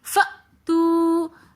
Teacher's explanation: فأتو کے اندر حمزہ ساکن ہے تو اس لیے ہم اس کو تھوڑا سا جھٹکا دے کر پڑھیں گے. فأتو تو کے اندر واو ساکن اور اس سے پہلے پیش آ رہا ہے تو واو مدہ ہونے کی وجہ سے ہم اس کو بھی تھوڑا سا کھینچ کر پڑھیں گے.